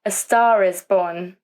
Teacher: the linking sound R is added in between